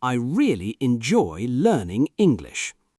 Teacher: Nice clear vowels. Stress on really and English.